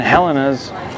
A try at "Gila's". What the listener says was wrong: No. It's not Helena's. There's no N. I think it's Gila's.